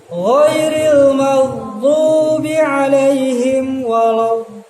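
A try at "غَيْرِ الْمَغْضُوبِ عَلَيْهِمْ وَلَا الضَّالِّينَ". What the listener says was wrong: Nah, tahan kelamaan. Ghairil maghdubi 'alaihim waladdallin. Tadi lama di situ. lama. Satu kali semuanya. Ghairil maghdubi 'alaihim waladdallin. Nah, kayaknya langsung tidak tidak gitu. Karena itu bukan huruf guna. Lam itu tidak guna. Lam. Ya, sambung.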